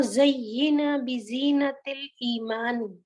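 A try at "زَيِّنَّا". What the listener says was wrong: اس میں دیکھیں جو یہ زینا ہے نا، اس کو زینا نہیں پڑھیں گے کیونکہ تشدید دونوں پر ہے. تو جس طرح آپ نے دفعہ ادا کیا، نون کو بھی 2 دفعہ ادا کریں گے. زینا.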